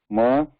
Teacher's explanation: So if you look at that, if you remember the diagram, when we are trying to pronounce ma, air is being pushed into the oral cavity and being stopped at the lips. Okay? And then air also passes through the nose. That is ma.